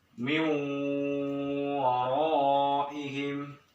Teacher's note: Nun mati bertemu dengan waw. Waw ini huruf idgham biguna, masukkan dengan dengung. Berarti cara bacanya dengung.